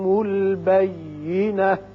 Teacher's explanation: البینات کی بجائے یہاں ساکن تا ہو جائے گی اور بینہ پڑا جائے گا